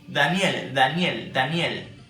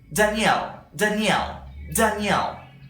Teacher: what you need is to place your tongue in the alveolar ridge that is the upper part of the teeth in the inner side